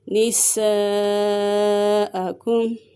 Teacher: سین کو کھینچ کے پڑھیں گے، یہاں پہ مد متصل کا قاعدہ ہو رہا ہے